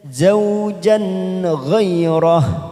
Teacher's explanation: ada huruf jim berharokat fathatain karena bertemu dengan ghain, maka kita baca jelas tanpa mendengung, bacaan idhar halki.